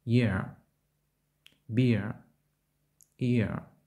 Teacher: Вимова починається з голосного «і», що переходить нейтральний голосний «е», іноді «а».